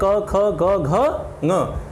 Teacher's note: यानी इनको बोलने में जो आवाज़ आती है, जो ध्वनि उत्पन्न हो रही है वो हमारे कंठ से यानी गले से उत्पन्न हो रही है। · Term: कंठ्य ध्वनियाँ